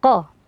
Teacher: Q Fathah di sini harus dibaca tebal